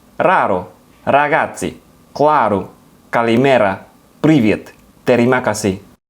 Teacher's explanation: It's that tip of the tongue R sound that you make as you sort of whip the tip. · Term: rolled R